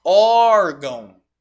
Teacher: órgão sílaba tônica é a penúltima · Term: paroxítona